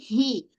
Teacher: Ha bulat tonjol baik-baik dari pangkal kerongkong